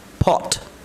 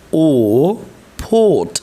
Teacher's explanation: একটা সাউন্ডের উচ্চারণ হচ্ছে অ, বেশি টান দেওয়া যাবে না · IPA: /ɒ/